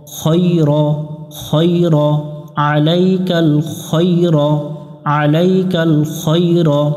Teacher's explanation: খ অক্ষর এটা মোটা করে আমরা পড়ব, জবরে আকার পড়ব না, খাই পড়ব না।